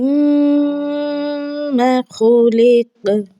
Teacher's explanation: میم میں میم کو مدغم کرنا ہے